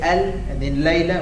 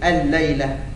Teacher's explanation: Are we saying al and then layla, or are we saying al-layla? With no gunna really, but it's merged.